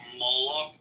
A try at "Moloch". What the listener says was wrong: You gotta say it right. It's not pronounced Moloch. You're saying it too Irish. It's Malak.